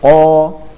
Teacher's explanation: dia punya sifat istila tebal dan juga di lain sisi ketika sukun dia akan dipantulkan atau